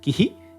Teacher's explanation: an h sound followed by an echo of the preceding vowel of the syllable the echo is always the short version of the vowel no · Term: visarga